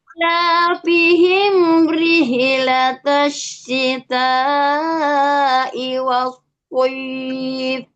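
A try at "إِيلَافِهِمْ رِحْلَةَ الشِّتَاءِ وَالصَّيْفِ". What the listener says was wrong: Disukunkan di huruf H-nya tadi rihlata langsung, Bun. Rihlata. Ila pihim rih ha. Ila pihim rih. Ya, seperti itu ya, di rihlatannya jangan ada penambahan huruf.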